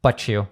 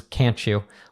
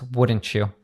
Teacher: And so now it's T plus Y. When we have a T plus a Y, where the Y is part of a function word, which usually I think is with you, it becomes a ch sound. So but you becomes but you.